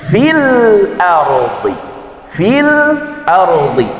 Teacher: Lam takrifnya harus dibaca jelas karena dia merupakan izhar qamariah